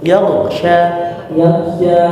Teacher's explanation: kasih mundur sedikit ya, ghain pangkal lidah